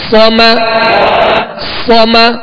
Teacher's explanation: صاد کو پر پڑھیں گے اور اس میں سیٹی کی آواز